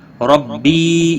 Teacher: یا مدہ ہے، ایک الف کے برابر کھینچ کر پڑھیں گے